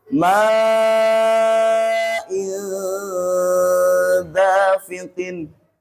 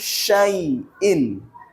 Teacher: Tanwinnya, dengungnya sudah siap masuk ke huruf depannya. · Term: ikhfa